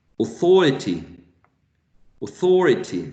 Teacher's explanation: one authority Authority thorry thora Authority because this one is unstressed this third syllable is unstressed